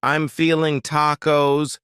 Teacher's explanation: I'm feeling tacos, cutting off that G.